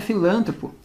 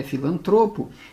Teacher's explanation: Pois é, não é filântropo, é filantropo. Ela é uma paroxítona terminada em O. Ela não é proparoxítona.